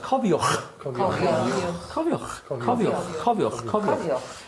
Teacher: the ch sound is put your tongue to say G. So say cofiwg. But on the G, breathe out.